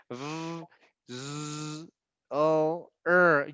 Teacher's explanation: if you touch your throat, if you say v, z, o, you can feel the vibration. We have vibration, so your vocal cord vibrates.